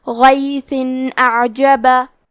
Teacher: اظہار کا معنی ہے ظاہر کرنا، اور کیونکہ تنوین کی اصلیت نون ساکن ہے تو ہم یہاں تنوین ظاہر کریں گے اور اسے نون ساکن پڑھیں گے اور بغیر غنہ سے یہ حکم کو ادا کریں گے